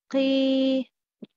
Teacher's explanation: The middle part of the tongue is raised. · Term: Yamad